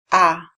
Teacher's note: Este sonido es como un sonido de la A relajado, sin poner ningún estrés, ningún esfuerzo en ningún músculo de la cara ni de la lengua.